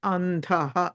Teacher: కొంచెం వినిపించట్లేదు అందరూ మాట్లాడ సో అంధః లో అం ప్లస్ ధః కాబట్టి ఆ ధ అన్నది ఆ తవర్గానికి సంబంధించింది తథ ధన అందుకని అనుస్వారం తర్వాత నకారం రావాలి